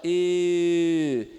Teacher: que é o E, arredondando os lábios